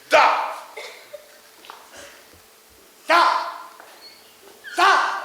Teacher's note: La lettre D, par exemple, se prononce en donnant le bout de la langue au-dessus des dents d'en haut